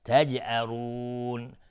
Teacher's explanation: جیم اینجا قلقله میخواد چون ساکنه.